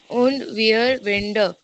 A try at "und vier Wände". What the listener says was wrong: वियर नहीं रे, वी means what? फाउ. वी means क्या होता? फ बोला था. und vier Wände. फियर वेंड, you can put stress on the letter.